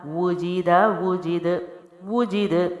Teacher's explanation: پہلے حرف پہ ہونٹ گول ہوئے، اگلے پہ نہیں کیے کیونکہ زیر تھی اور اس کی آواز پست ہے